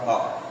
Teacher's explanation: यदि हमें आ मुंह से बोलना है तो वह हवा जो है वो कंठ को पूरा खोलेगी और मुंह पूरा खुलेगा और हमारे मुंह से निकलेगा आ।